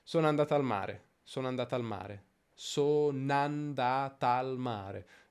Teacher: facendo l'elisione della prima vocale